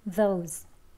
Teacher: 네, 그쪽에 대셔서 원래는 z, z 이렇게 소리가 나는데요. 단어의 끝소리이기 때문에 진동은 빼고 발음합니다.